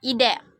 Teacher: bunyi eh dengan ciri-ciri Tengah depan tak bulat